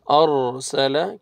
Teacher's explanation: را کو پر کریں گے، ارسل کیونکہ را جزم سے پہلے زبر آ رہا ہے